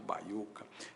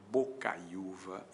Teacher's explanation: a verdadeira emissão é de dois ditongos, portanto na verdade não existe iato aí.